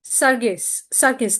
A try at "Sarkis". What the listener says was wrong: Actually, it's pronounced Sarkis. Think of the G as a K, but it's okay.